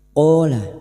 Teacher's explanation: Qola fathah diikuti alif dua harakat kita panjangkan mad thabi'i.